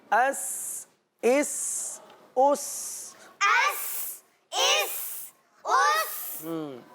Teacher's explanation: سین کی سیٹی کی آواز، صحیح ہے، ظاہر کر کے نکالیں گے۔